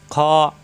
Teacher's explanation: খ কন্ঠনালীর শেষ অংশ থেকে